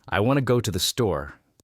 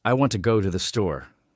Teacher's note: When I say it, I stress I, want, go, and store. The words to, and the are much softer, almost like background music, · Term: Rhythm